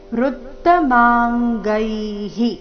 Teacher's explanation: ವಿಸರ್ಗದ ಉಚ್ಚಾರಣೆ ಹಿ ಎಂದು